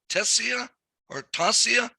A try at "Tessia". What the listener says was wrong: It's pronounced Tessa. Tessa. The I is silent.